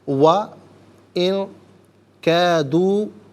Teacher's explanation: و ان کیدو، ان میں نون ساکن ہے، نون ساکن کے بعد کاف حرف اخفا ہے، تو نون ساکن کو اخفا کے ساتھ پڑھیں گے، یعنی ناک میں آواز لے جا کر گنگنانا، اس سے اخفا کہتے ہیں